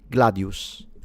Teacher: the S should be a retracted sound, so kind of similar to the S like they pronounce it in Madrid Spanish or modern Greek. It's in between the S and the sh, so it's Gladius would be the pronunciation.